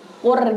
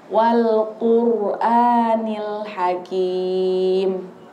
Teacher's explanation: tapi rnya ro tafkim tebal makanya Wal quranil Hakim I rnya tebal jadi dia agak maju